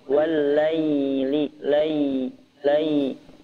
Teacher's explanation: ingat i-nya enggak boleh terdengar e